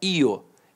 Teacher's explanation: Então o I semivogal e o O vogal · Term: semivogais